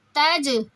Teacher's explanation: تا کو جیم سے ملائیں گے، جھٹکا دیں گے کیونکہ قلقلہ، قلقلہ کہتے ہیں جھٹکا دینا، اور جھٹکا 5 حروف پہ دیا جاتا ہے، قاف، طوا، با، جیم، دال۔